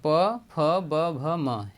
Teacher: प, फ, ब, भ, म, ये दोनों ओठों से बोले जाते हैं